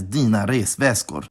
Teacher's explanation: the high pitch from the last syllable in väska didn’t survive into the compound word because it moved off the first posttonic, or the syllable immediately after the stress.